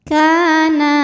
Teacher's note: sebab ada alif didahului harokat fathah. Maka huruf kaf ini kita panjangkan 2 harokat saja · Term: mad tabi'i zahiri